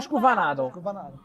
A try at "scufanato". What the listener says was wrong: No, scufanato con la U.